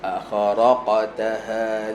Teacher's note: Qaf qalqalah pada huruf tebal. Sentiasa bayangkan dia seolah-olah berbaris atas.